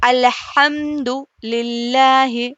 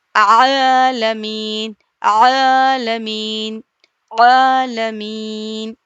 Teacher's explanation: درمیانی حلق سے ح ادا ہو رہا ہے اور عین ادا ہو رہا ہے